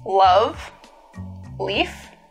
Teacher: One remarkable feature of this variety is a light L